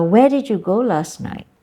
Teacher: if you ask a question you have to ask that it sounds like a question too there's this Rising intonation